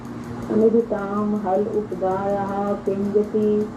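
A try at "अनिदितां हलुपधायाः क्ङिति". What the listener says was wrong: ये ककार पे मात्रा नहीं है, ङिति है, ङिति, ङिति। हाँ, ये ककार पे नहीं है मात्रा, क्योंकि यदि ककार पे मात्रा ये होती तो ये तो पूरा ही ना हो जाता।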